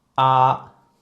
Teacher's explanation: it has a pitch of five which shows it is the highest tone of all of tones · when you pronounce the first tone please use relatively High position it goes like ah the second tone even it's a rising